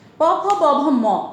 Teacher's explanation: এই 5টি বর্ণ হচ্ছে ওষ্ঠবর্ণ, ওষ্ঠকে স্পর্শ করে।